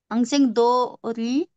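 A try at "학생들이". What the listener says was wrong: हाक सेंग दरी, दोरी नहीं दरी।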